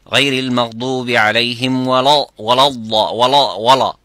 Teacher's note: So what I say, غير المغضوب عليهم ولا waladda. So say the dad is full mouth and not the lam.